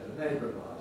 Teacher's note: the original schwa at the end of neighbour has entirely disappeared. We're left with an R instead, a neighbour of ours.